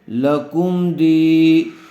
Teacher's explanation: یا مدہ ہوگا، دال کو تھوڑا کھینچ کر پڑھیں گے